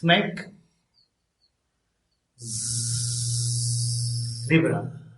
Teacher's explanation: s is a strong friction sound and z is a weak one.